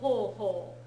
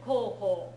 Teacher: when you run it all together the O and the ooh sound tend to sort of blend into one another